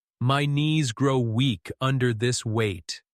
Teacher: Lower your pitch on weak, slow on weight.